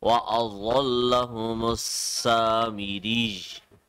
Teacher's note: ra will be connected with ya because of the تشديد